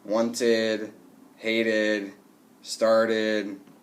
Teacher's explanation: So if we have a T or D, then we have to add the id sound, okay? Short I and D together, and it makes a new syllable at the end.